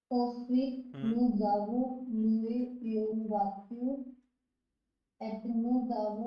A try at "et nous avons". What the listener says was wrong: एत नहीं है, अब सुनिए, एत नहीं है, ये क्या है? ए, ए, हाँ, ए, आगे.